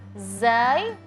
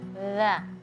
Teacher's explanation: Kalau za lidah kita di dalam, kalau dza lidah kita keluar.